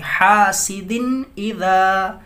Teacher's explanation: یہاں پہ دال تنوین ہے، دال پہ نیچے 2 زیر ہے، تنوین ہے، دال کے بعد حروف حلقی حمزہ ہے تو اس لیے اظہار کریں گے